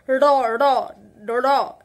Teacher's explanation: তাড়িত ধ্বনি র র র, এই যে র উচ্চারণ, ঠিক আছে, একটা জিভের মধ্যে একটা তাড়নার সৃষ্টি হচ্ছে, সেই কারণে এই ডয়শীর্ণরা হচ্ছে তাড়িত ধ্বনি।